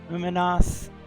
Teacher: the main emphasis is on the last syllable